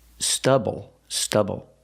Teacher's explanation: pronation use the short uh like cup and up stubble stubble put the stress on the first syllable